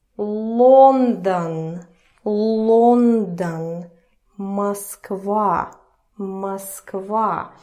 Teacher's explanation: And the first rule is that O, Russian O, when it is unstressed, where there is no stress and no accent going on it, it turns to the sound E. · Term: vowel reduction